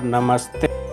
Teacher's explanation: जैसे नमः जोड़ते बराबर नमस्ते। नमः के अंत में विसर्ग है, विसर्ग के पश्चात त व्यंजन वर्ण है, इसलिए नमः के विसर्ग को दंत सकार होकर शब्द निष्पन्न हुआ नमस्ते।